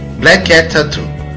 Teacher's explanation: Ouve-se o som K apenas uma vez entre as palavras black, cat. Tampouco é pronunciado duas vezes o som T ao final de cat e o início de tattoo, black cat tattoo.